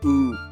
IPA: u